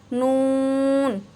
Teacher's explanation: नून को आपने नाक में ले जाके आवाज़ जो है ना, इसकी थोड़ी नाक में आवाज़ आएगी